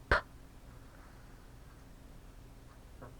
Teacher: So pe can take a doggish slanting, and with a doggish slanting, it makes the voiceless bilabial plosive, same as P in English.